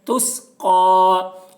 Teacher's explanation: تا سے ملا کر پڑھیں گے، تس، قاف کھڑا زبر قا، قاف کے اوپر کھڑا زبر ہے، کھڑا زبر برابر ہوتا ہے الف مدہ کے، اس لیے کھڑا زبر کو ایک الف کے برابر کھینچ کر پڑھیں گے